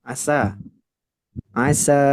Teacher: sinnya dibaca panjang empat harakat